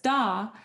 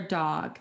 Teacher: the child continues to delete the final consonant, still has that immature speaking pattern